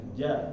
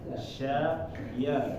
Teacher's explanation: bertempat di ee Tengah lidah bertempat di tengah lidah dan pengucapannya untuk huruf Jim ini adalah dia menempel ya ke langit-langit Adapun huruf ya dan huruf Sya dia tidak menempel ke langit-langit Jadi kalau ja itu ditempel langit-langitnya tengahnya aja ya depannya enggak